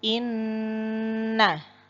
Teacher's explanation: pada nun tasdid sempurnakan gunnahnya sekitar 1,5 alif.